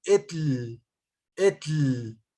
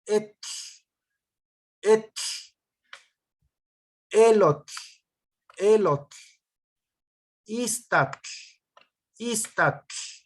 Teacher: La L es una L sonora, es decir, suena, porque vibra mi cuerda vocal. Pero en náhuatl, a final de palabra, esta L que no suene. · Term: que no vibre la L